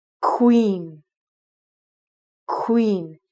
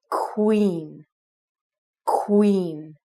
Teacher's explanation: if you take the first qua sound you're gonna make it like a kW